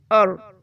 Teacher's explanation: سب سے پہلے دیکھتے ہیں الرحمن میں پہلا سلیبل اور، اس میں را موٹا پڑھا جائے گا